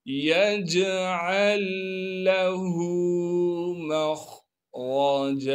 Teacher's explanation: पहला लाम साकिन है, लिहाजा अब इस लाम को इस लाम में मुदगम कर देंगे, यानी आइन को डायरेक्ट इस लाम से मिलाकर पढ़ेंगे।